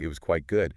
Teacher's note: a rising tone like it was quite good can make it sound more tentative, more like fairly. But a firm falling tone, it was quite good can sometimes strengthen it, especially in AV or just sound more definite about the fairly meaning in BRE.